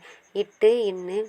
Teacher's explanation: நுனி நாக்கு நுனி அன்னத்தை தொடுவதால் பிறக்கின்றது